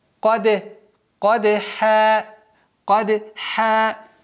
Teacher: قَف, твердый звук, даль, мягкий звук, но она взрывная, взрывной звук с «калькалей», и поэтому применяем «калькаля».